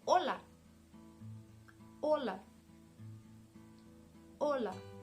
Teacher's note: as you can realize the intonation is on the first part